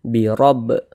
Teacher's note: Nah, kita pantulkan huruf ba-nya. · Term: qalqalah sugro